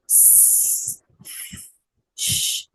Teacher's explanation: when you make uh voiceless sounds like shh, no vibration